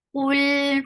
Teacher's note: circle your lips, make qaf heavy, attach with lam, lam will get tawassut.